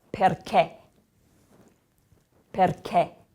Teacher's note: now there's an accent on the last syllable